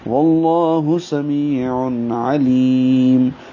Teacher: واللہ میں لام اسم جلالہ کو پر پڑھیں گے کیونکہ پیچھے واو پر زبر ہے ، واللہ سمیع میں سین سیٹی جیسی آواز سے، می یا